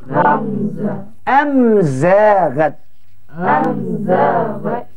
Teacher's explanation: bunyi mim ni terang nyata sebab dikeluarkan pada dua bibir